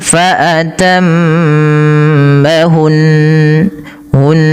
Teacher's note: Karena di sini nunnya berharakat tasydid ya. Tidak boleh hanya sekedar fatamahun tapi dia harus ada bacaan gunahnya. sambil m ya faatammahun hun nah seperti itu. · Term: gunnahnya